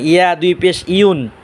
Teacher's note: ইয়া আপনার উচ্চারণ হবে জিব্বার মাঝখান তালুর মাঝখান,